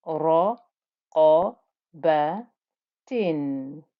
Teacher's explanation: We had that nice thick sound of the qaf.